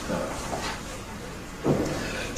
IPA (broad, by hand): nəʊ